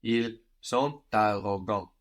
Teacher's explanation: We could have a liaison there with the T on the end of sont and arrogant.